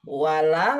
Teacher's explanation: Wala lanya panjang, ada mat, fathah ketemu alif.